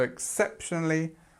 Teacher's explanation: we have our stress here on the second syllable, so exceptionally, and then we have the li sound, of course, at the end, exceptionally.